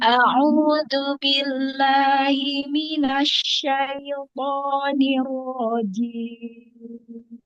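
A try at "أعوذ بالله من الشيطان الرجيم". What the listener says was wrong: Mina, tekan mimi lagi.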